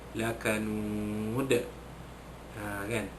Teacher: Dan apabila huruf dal itu berada di hujung sekali, maka satu lagi hukum, iaitu qalqalah kubra, dilantunkan kuat bunyi dal itu kerana dia berada di hujung